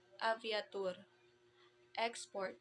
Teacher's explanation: The first type of stress is the oxytone words, which the stress falls on the last syllable.